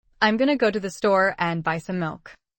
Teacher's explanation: The stressed words are go, store, buy, milk. · The weak forms are gonna, going to and some reduced. The stress words are go, store, buy milk.